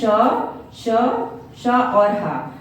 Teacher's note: ये एक प्रकार की रगड़ या घर्षण से उत्पन्न होते हैं, यानी कि एक दबाव सा उत्पन्न होता है तो एक गर्मी का आभास हो जाता है, इसलिए इन्हें हम ऊष्म व्यंजन की श्रेणी में रखते हैं।